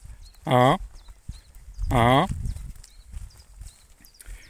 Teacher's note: So I do it like uh. So very open, quite central indeed. So very close to the way I would pronounce ah. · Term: nasal A